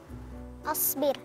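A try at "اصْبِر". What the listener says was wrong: sebenarnya pelafalan harakah di kosakata tersebut asbir atau seharusnya dibacanya isbir, ya.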